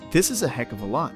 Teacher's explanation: and finally of links to a lot producing the sound of a lot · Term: connected speech